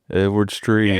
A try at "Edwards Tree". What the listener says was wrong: Edwards Tree. It's Edwards Tree. You said trees. Edwards Tree. It's Edwards Tree.